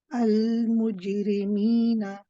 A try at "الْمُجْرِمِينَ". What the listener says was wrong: And just sharpen up that kasra You know, they're on the ra. Al-mujrimina.